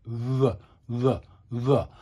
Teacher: my top row of teeth are almost touching my bottom lip. They're almost touching or they are touching. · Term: R sound